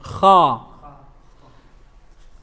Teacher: What is being raised? The back of your tongue is being raised.